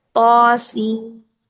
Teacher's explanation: तो यहाँ पर हमने दो हरकत लंबा किया अलिफ मद्दा की शक्ल में